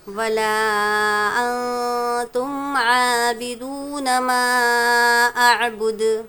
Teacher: ولا میں مد کریں گے، 2 یا 3 الف کی مقدار کھینچیں گے